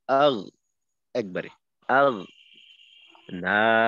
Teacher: গয়নের উচ্চারণে কিন্তু ধাক্কা লাগবে না। যেমন মনে করেন যদি আমি এইভাবে বলি আগ, এই আওয়াজটা কিন্তু একটু ফিরতি আওয়াজ আসলো, তো এই ফিরতি আওয়াজটাকে আটকাইতে হবে।